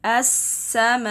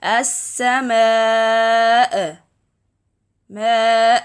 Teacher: the sound of a Hamza should be cut without vibration, without repeating the sound again on the articulation point. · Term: Hamza Sukun